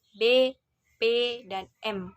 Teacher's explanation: terjadinya karena adanya pertemuan antara bibir atas dan bibir bawah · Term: bilabial